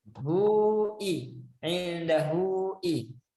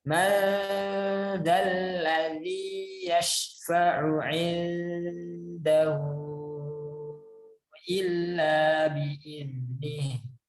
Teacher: Jadi ini namanya mad silah kubro atau mad silah tawilah. Bacanya panjang 4 atau 5 harakat.